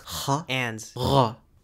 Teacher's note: Luxembourgish has the uvular fricatives /χ/ and /ʁ/ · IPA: /χ/ /ʁ/